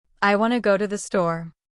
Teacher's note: That natural flow with reduced sounds like wanna instead of want to is how native speakers really talk.